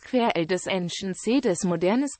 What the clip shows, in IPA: kəˈʀɛl dezɑ̃ˈsjɛ̃ edemɔˈdɛʀn